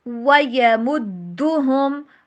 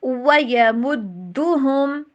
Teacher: وی اس کو ایسے نہیں پڑھنا، ڈبلیو ساؤنڈ پڑھیے۔